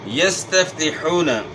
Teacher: حا کی آواز گلے کے درمیان سے ہے، واو ساکن سے پہلے پیش ہے، واو مدہ ہے، ایک الف کے مقدار کے برابر کھینچنا ہے